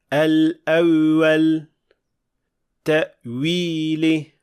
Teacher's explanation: U tabiiy va o'rtacha holatda bo'lishi kerak. Ikkinchi xato bu vavni aytayotganda tilning oʻrta qismini ko'tarish. Bu vav bilan birga ya ohangini ham hosil qiladi.